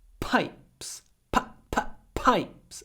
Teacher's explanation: here we have an i between two P sounds usually between two unvoiced sounds the vowel gets clipped pipes p p pipes there's not a lot of vowel pipes